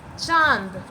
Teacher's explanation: मुख भी खुलेगा, नाक भी खुलेगा, नाक से भी हवा निकलेगा और मुख से भी हवा निकलेगा। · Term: अनुनासिक स्वर